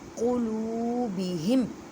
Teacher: لو کو ایک الف کی مقدار میں کھینچ کر پڑھیں کیونکہ واو ساکن سے پہلے پیش آ گئی ہے تو واو مدہ کا قاعدہ کریں قلوبہم۔